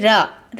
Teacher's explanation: हिंदी में र है जो आपका वो लुंठित व्यंजन के अंतर्गत आएगा